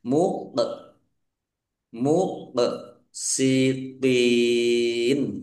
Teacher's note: Qof sukun bacaan qalqalah ya dibaca memantul ditampakkan pantulannya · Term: kolkola